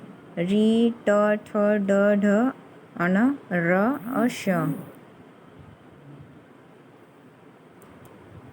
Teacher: जीभ हमारे तालु के मूर्धा भाग को टच करती है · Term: मूर्धन्य